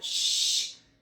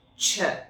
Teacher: Sh is a lot softer, our lips aren't as round, but when we do ch, there's a lot of force there, and you can see that demonstrated by these long, forceful lines versus this more soft, windier, blowy air.